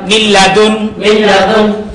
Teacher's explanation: অতএব নুন সাকিনকে গুন্না ব্যতীত ইদগাম করিয়া পড়িতে হয়